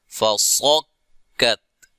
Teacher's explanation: تا کو ہلانا نہیں ہے کیونکہ تا حروف قلقلہ میں سے نہیں ہے. اور صاد کو موٹا ادا کریں گے.